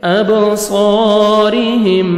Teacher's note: را کے نیچے زیر ہے، را کو باریک کر کے پڑھیں گے